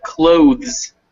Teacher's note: you want to make sure that you keep voicing it all the way through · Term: voiced